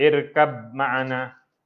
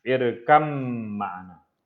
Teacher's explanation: Ba bertemu dengan mim tapi bunyi irkam, ba hilang terus. Dia tak irkab ma'ana.